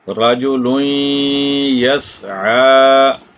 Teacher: یہاں لام کے اوپر تنوین ہے اور اس کے بعد یا ہے، تو یہاں بھی ہم نے ادغام کیا غنہ کے ساتھ، اور 2 حرکات یا ایک الف کی مقدار رکنا تھا، جو ہم نے رک کر ادغام کیا۔ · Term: ادغام مع الغنہ